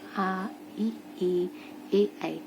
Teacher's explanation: बोलने में इसको हमारा होठ जो है वो बिल्कुल भी गोल शेप में नहीं हो रहा है। इसका मतलब ये आवृतमुखी है।